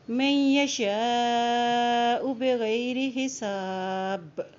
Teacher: حمزہ کے اوپر مد ہے تو اس کو یہاں پہ لمبا ادا کریں گے